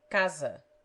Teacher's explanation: it has the z sound when it stands between vowels